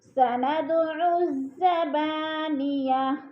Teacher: سند کی دال کو بھی ہلا کے پڑھیں گے، حروف قلقلہ میں سے ہے